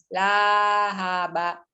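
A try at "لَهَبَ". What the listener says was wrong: Kepanjangan. Ulang dari lahaba itu jangan kepanjangan.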